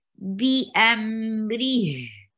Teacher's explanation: You will give rakhawa on ra and give a short sound for ri.